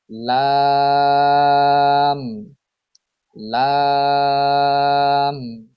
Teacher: জিহ্বার আগার কিনারা সামনের উপরের দাঁতের মাড়ির সঙ্গে লাগিয়ে উচ্চারিত হয় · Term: 8 নাম্বার মাখরাজ